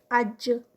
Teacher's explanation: تو جیم میں بھی ایک دم سے سانس بھی رکی، آواز بھی رکی، تو قلقلہ کرتا ہے، باؤنس بیک کرتا ہے جب اس کو روکتے ہیں.